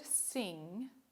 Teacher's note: English also has a voiced velar nasal. The word sing doesn't end with a n followed by a g, it ends with a single consonant, the velar nasal.